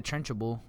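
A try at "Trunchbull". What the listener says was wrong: It's not that many syllables. The trench bowl. Just watch your syllables there. It's not lunchable.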